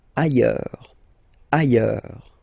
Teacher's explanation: Ailleurs. Look, final S not pronounced, and then you've got this y sound